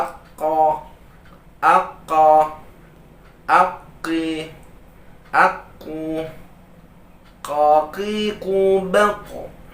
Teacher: pangkal lidah yang paling jauh dari bibir menempel pada rahang atas bagian daging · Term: huruf qof